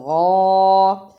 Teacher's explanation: غین کھڑی زبر چھوٹی مد غا، غین کے اوپر کھڑی زبر بھی ہے اور چھوٹی مد بھی ہے، اس لیے اسے تھوڑا سا لمبا کیا